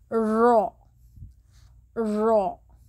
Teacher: رو کے ادا کرنے میں زبان کو گول کرنا ہوگا اور تارک کی طرف لے جانا ہوگا